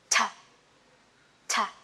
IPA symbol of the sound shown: t